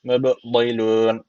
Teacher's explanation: b harfi cezim almış. O zaman burada kalkale tecviti var. Birazcık vurgulayacağız. Mblilun. En sonda da meddi ararı tecüviti var.